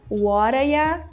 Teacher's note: Instead of saying you, a lot of people, a lot of native speakers can say ya.